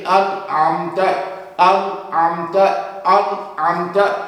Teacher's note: نون اپنے مخرج سے ٹکرائے گا اور آگے چلا جائے گا